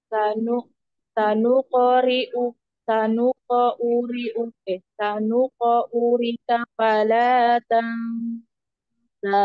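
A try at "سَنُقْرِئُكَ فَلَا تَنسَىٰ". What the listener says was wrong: Urika, nggak ada urika, sanukri uka.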